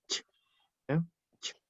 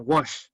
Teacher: este sonido es un ch, ¿ya? Ch. Es diferente al sonido sh, que es el de como wash.